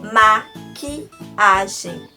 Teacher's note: Q e o U com um som de K, e que eu não pronuncio o U, eu tenho um dígrafo.